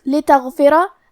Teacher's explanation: کلمت لتغفرہ، حرف الغین ہے اور غین کی ادائیگی حلق کے اوپر والی حصے سے ہے. غین حروف تفخیم میں سے ہے تو ہم یہ حرف کو موٹی آواز میں پڑھیں گے. آخری میں کیونکہ را پہ زبر ہے تو یہاں را کا حکم ہے تفخیم، تو ہم حرف را کو موٹی آواز میں پڑھیں گے.